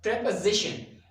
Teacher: stress will be on the z sound